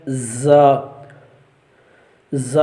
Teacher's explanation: زبان کی نوک اور دونوں دانت جو ہے ان کا جو ہے نا اندرونی کنارہ اس سے ادا ہوتا ہے۔ زا، زا، اور اس کے اندر جو ہے وہ سیٹی لگائی جاتی ہے۔